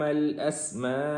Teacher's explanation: سین کے اوپر پراپر سین کی آواز نکالیں گے، اس کو موٹا بھی نہیں کریں گے، سی ٹی کی آواز بھی آئے گی۔